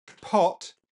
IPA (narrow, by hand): pʰɔʔt